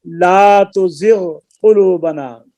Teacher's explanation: غین کا مخرج ادنا حلق ہے، قاف کا مخرج اقصی لسان لحات ہے، تو ان کا بھی نہیں ہوگا. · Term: قریب المخرج